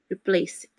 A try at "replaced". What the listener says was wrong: Not replace it. No, there's no Even though there's a vowel, there's no vowel sound. Replace. There's the s sound and then a t sound.